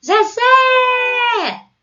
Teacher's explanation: Então olha Zé se prolongou é a tônica